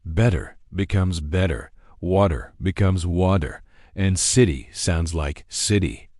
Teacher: in many American accents, this T often transforms into a soft D sound, which linguists call a flap T.